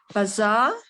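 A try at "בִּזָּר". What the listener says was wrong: First vowel is the first vowel is E. that.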